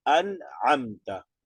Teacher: De nuevo apareció una nun sukun y le sigue una Ain. De nuevo. La Ain no nasaliza. Entonces, en este caso, de nuevo, acentúa nada más la anterior.